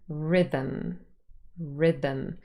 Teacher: the new syllabic consonant becomes the nucleus of the syllable · a syllabic consonant replaces the schwa in an unstressed syllable now in that case the new syllabic consonant becomes the nucleus